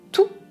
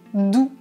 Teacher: nous avons le T qui est sourd et le D qui est voisé, comme dans le mot tout et dans le mot doux.